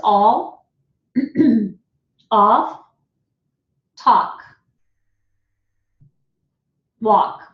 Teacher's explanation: We don't pronounce the L, it's just the awk